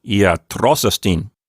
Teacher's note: estin gave away its accent to iatros, which is the previous word. Iatros already had an accent there, so it just keeps the accent in the same place, and it sounds like iatros estin.